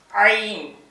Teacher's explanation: வாத் தா இது வந்து வா இது தா இது வந்து வா புள்ளி வச்ச பிறகு வாங்க வாய் பாருங்க வா இதுக்கப்புறம் அடுத்த எழுத்து வந்து ஐன் ஐன்னு சொல்லுவாங்க ஐன்னா ஒரு ஏறக்குறைய ஆனா மாதிரிதான் ஆனா ஐன் தொண்டையில இருந்து உச்சரிக்கணும் · ஐன்னா ஒரு ஏறக்குறைய ஆனா மாதிரி தான். ஆனால் ஐன் தொண்டையிலேருந்து உச்சரிக்கணும்